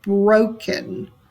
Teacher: So you hear the stress on the first syllable